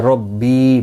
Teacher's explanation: بی یا مدہ ہے، ایک الف کی مقدار کے برابر کھینچ کر پڑھا جائے گا